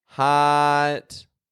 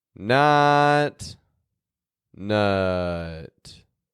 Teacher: ah is positioned higher in the back of your tongue than uh